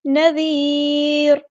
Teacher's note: اس سے پہلے یا ساکن ہے تو را ہم باریک پڑھیں گے